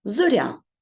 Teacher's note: Я позначає два звуки й а але ось цей М'який приголосний й робить м'яким звук р і в результаті ми вимовляємо м'яку Зоря і в кінці чуємо